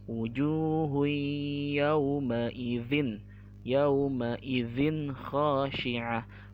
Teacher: Ya, kan hukumnya idgham artinya tanwin tadi dimasukkan kepada huruf selanjutnya, maka huruf ya ini seakan-akan ada tasydidnya